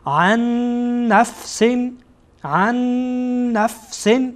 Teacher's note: اینجا هم نون عن بعد از این نون ساکنه، بعد از نون ساکن نونی آمده که حرکت داره، اینجا ادغام میشه